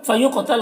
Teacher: قاف کو پر پڑھنا ہے اور یہاں پر قلقلہ بھی کرنا ہے